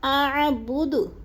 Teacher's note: دال کو وقف کی صورت میں ساکن کر کے پڑھیں گے